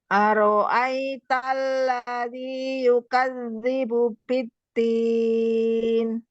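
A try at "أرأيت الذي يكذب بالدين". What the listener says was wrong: Jadi jangan diturunkan ya, yang jangan diturunkan yang oro fathah tebal ya, yang naik ya. Aital ya, tidak aro.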